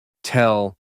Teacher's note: La E de tell se mueve hacia atrás y suena más como una schwa.